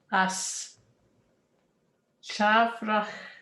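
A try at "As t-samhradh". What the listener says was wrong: is staurig. Is staurig. The MH disappears. Is staurig. And see the T hyphen to the S, what happens is you drop that S. Staurig. Then the S disappears and the MH disappears. Staurig. Staurig.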